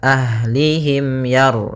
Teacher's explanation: Kemudian pada lafal mim ketemu dengan ya, di sini kita namakan dengan izhar syafawi. Maka cara membacanya tidak boleh ditahan suara mimnya, tapi langsung ke huruf ya